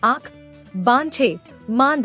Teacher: अनुनासिक के उच्चारण में नाक से सांस बहुत कम निकलती है तथा मुख से अधिक निकलती है, जैसे आँख, बांछे, मांद आदि।